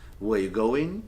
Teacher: high rise at the end instead of the low fall